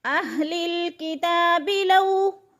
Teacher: من اہل الکتاب لو یغدونکم، کتاب جو ہے ادھر کھڑی زبر ہے، کھڑی زبر الف مدہ کا قائم مقام ہوتی ہے، یعنی جتنا الف مدہ کو ہم کھینچتے ہیں اتنا ہی کھڑی زبر کو کھینچیں گے 1 الف کے برابر